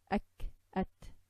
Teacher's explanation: Kaf and ta have a shot of air.